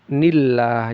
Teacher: Karena kasrah ini maka dia menjadi tipis nillah